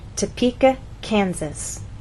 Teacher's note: we stress the middle part of the word Topeka and here the first part Kansas